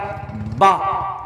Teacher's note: دونوں ہونٹ ملاتے ہیں اسے تب با نکلتا ہے۔